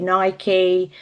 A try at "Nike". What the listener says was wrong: You gotta start using the Greek pronunciation, not the Anglo-Saxon. Nike. Nike.